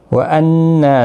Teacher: نا الف مدہ بھی ہے، ایک الف کی مقدار کے برابر کھینچ کر پڑھیں گے